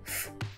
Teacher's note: Já o fonema F, não dá para sentir nada, não há vibração.